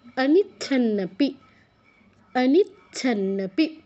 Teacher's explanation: প্রথম চয় হসন্ত, চতে টাচ করে ছ, অনিচ্ছন্নপি, পরে দুটো ন আছে।